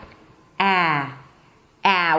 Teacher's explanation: So to get to that position, you want to push your tongue forward. The front part of the tongue is down and flat. The tip of the tongue is touching right behind the teeth. And the back of the tongue is high.